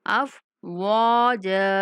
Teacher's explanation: واو کے بعد الف مدہ ہے تو واو کو تھوڑا کھینچ کے پڑھیں گے